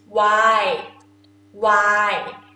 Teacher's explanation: not really put N sound at the end, just waai